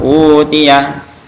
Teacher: Jadi utiyah, jadi waw dia. Jadi hamzahnya berubah jadi waw mati. Jadi panjang utiyah. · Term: mad badal